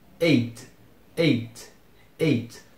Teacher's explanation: não pesem demais o t que ele também é bem silencioso · Ele serve mais como um ponto assim de parada, meio que de atraso, do que como som de G. Então é como se você começasse a pronunciar as primeiras duas letras, o E e o I, depois desse uma paradinha e depois pulasse para o T. Eight, eight, eight, eight.